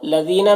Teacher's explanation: لذینہ میں یا مدہ ہے، ایک الف کے برابر کھینچیں گے